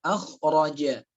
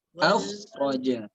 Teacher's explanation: Kho itu di tenggorokan kita, karena kho itu termasuk huruf izhar khalqi, jelas di tenggorokan khalqi.